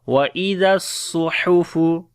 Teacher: Ha we read from the middle of the throat. وَإِذَا الصُّحُفُ Suhufu, and also Hams quality on the Sad.